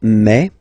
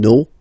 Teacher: even if you've got this final s you don't pronounce it